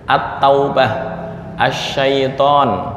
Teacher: ketika al bertemu dengan tak dibaca idgham